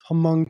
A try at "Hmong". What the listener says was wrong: Hmong. You don't pronounce the H.